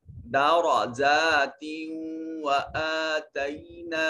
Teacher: تنوین ہے اور آگے واو حروف یرملون میں سے ہے، تو پھر یہاں اس کو ادغام کر کے پڑھیں گے